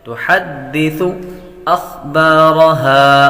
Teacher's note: خا حروف مصالحہ میں سے ہے، حروف مصالحہ کو ہمیشہ ہر حالت میں پر پڑھا جاتا ہے، یعنی موٹا پڑھا جاتا ہے